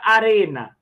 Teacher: E a palavra arena, a sílaba mais forte, arena. Olha aí, a sílaba mais forte é o re